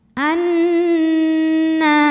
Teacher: Cara bacanya adalah berdengung, bunyi N-nya tahan sampai ada suara masuk hidung, kurang lebih 2 harokat. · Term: gunnah musyaddadah